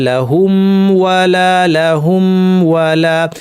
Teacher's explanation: মিম আর ওয়াওয়ের মাখরাজ এক হওয়ায় এখানে অস্পষ্টতা তৈরি হতে পারে, সেজন্য না হয় খেয়াল করে এই জন্য দুইটাকে আলাদা আলাদা রেখে স্পষ্টভাবে ইজহার করে পড়তে হবে লাহুম ওয়ালা, লাহুম ওয়ালা।